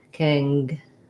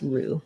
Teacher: Third syllable stress, probably because the word may come from another language that has different patterns.